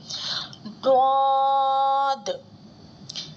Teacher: زبان کی کروٹ جب اوپر کی دانتوں کی جڑوں سے لگتی ہے تو حروف ضاد ادا ہوتا ہے اور یہ حروف حافیہ میں سے آتا ہے.